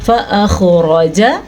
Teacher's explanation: خو کو واضح کر کے پڑھیں، خو کو پر پڑھیں اور را کو بھی پر پڑھیں کیونکہ را جو ہے زبر کے ساتھ ہے اس لیے، لیکن لمبا نہیں کرنا.